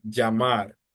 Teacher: In Colombia, they tend to pronounce the double L like a soft J.